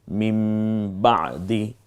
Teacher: এবং এটাই নিয়ম যে তানভিন এবং নুন সাকিনের পরে যদি বা আসে, বা হরফটি, এখানে আমরা নটাকে ম পড়ব